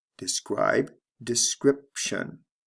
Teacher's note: sound changes describe description notice there are two sound changes here the long i becomes a short i describe description and the b becomes a p sound before the